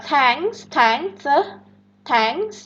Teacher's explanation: Itu dia voiceless, dental, fricative.